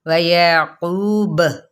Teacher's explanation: وقف بالاسکان کے ساتھ ساتھ یہاں پہ قلقلہ بھی ہوگا